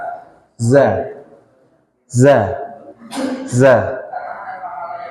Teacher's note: Mahrojnya sama dan posisinya persis kayak sin, dia nggak diangkat. Hanya saja di sini ketika kita mengucapkan huruf zai itu ada kayak ihtizaz, kalau dalam bahasa Arab ada getaran.